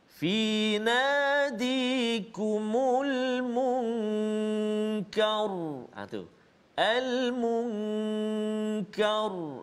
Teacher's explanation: maka kita lihat huruf sebelumnya iaitulah huruf kaf berbaris atas fathah, maka ra tu dia bunyi tebal.